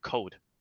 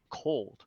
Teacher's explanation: when I say the L sound, it was kind of gone. I was actually missing.